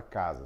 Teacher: a letra S aqui tem um som de Z, não tem exatamente um som de S